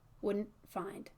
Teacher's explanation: Wouldn't find is that stop T into F.